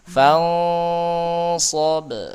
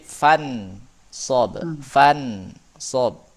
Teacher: Emang samar, kayak bukan nun sukun, samar-samar antara nun sukun dan bukan gitu. Makanya bukan fan sob bacanya, tapi fan sob dengan gunnah yang dipanjangkan.